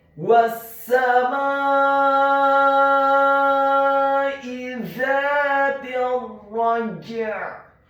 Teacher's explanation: huruf mimnya dibaca fathah 4 sampai 6 harakat karena setelah huruf mim yang fathah ada alif